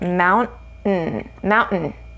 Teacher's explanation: We have a vowel sound, an N sound, a T sound, and then followed by a vowel and an N sound. So here we're going to omit the vowel sound. So it's just an N sound.